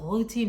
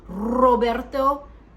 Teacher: Back of the throat, a little bit like routine, you know, it's got that R back there. It's not the R is in the back of the throat instead of the front of the throat, like Roberto.